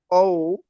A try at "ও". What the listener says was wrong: হ্যাঁ, আর একটু লম্বা করে।